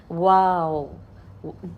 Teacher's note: ہمارے ہونٹ گول ہو کر باہر نکل کر واپس اپنی اصل پوزیشن پر آتے ہیں